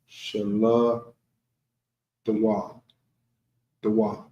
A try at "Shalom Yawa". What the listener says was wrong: Now you're saying D.